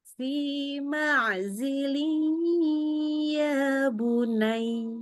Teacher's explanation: Tanwin ketemu ya-nya. Biasakan ya. dengungkan lebih lama, lewatin hidung.